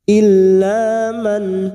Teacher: dalam Alif Il la lam alif dua harakat kita panjangkan illaan nun sukun bertemu Hamzah idhar halqi nun sukun kita baca jelas tanpa dengung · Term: idhar halki